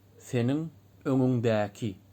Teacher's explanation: dediğimiz gibi s diş arası söyleniyor